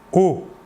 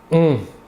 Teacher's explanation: L'air sortira entièrement par la bouche. Alors que pour le ON, l'air sortira par le nez.